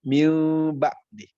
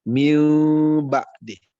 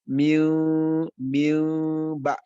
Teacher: mengubah bunyi nun sukun atau tanwin menjadi Bunyi mim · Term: iqlab